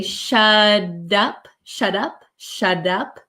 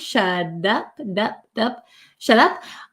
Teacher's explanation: My tongue goes up like a D sound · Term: soft D sound